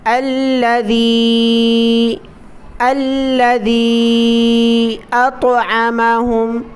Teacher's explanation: ذال کو زبان کی نوک باہر نکال کر پڑھنا ہے اور مد کرنی ہے